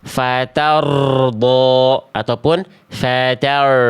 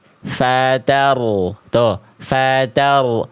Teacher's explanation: getarannya ya tetap ada tidak terlalu berlebihan ya tidak juga hilang ya tetap tegas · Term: takrir